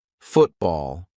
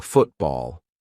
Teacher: When a syllable ends in T and it is followed by a consonant sound, we're going to use the glottal stop.